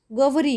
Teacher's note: ગૌરી ન બોલે, ગવરી બોલે. વ ઉચ્ચારે જ, ચોખ્ખો ઉચ્ચાર.